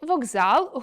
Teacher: Глухий приголосний перед дзвінким також стає дзвінким (уподібнюється). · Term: одзвінчування